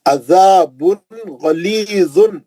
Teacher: عین مرکزی حلق سے، زا کو زبان لگا کے پڑھیں گے